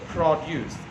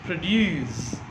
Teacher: For example, the word produce, P-R-O-D-U-C-E, produce is stressed right at the beginning. So produce, it is a noun. If it is a verb, it is pronounced produce. So stress is on due. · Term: stress shift